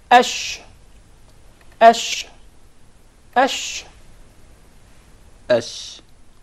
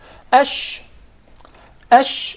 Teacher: there is a very notable elevation in the middle part of the tongue watch this once again here the middle top of the tongue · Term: shin